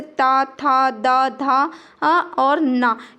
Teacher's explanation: जो आपकी टंग जीभ होती है वो आपके दांतों को स्पर्श करती है इन वर्णों को बोलते समय, तो उनको दंत वर्ण या दंत व्यंजन कहते हैं।